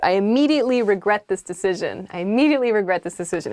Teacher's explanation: I immediately regret this decision, but with kind of like a flat tone to it.